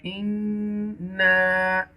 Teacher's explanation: you must make gunna on nun mushadda